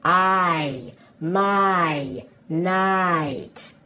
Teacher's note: hear how that I sound is actually two sounds pushed together